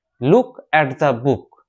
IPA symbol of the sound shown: ʊ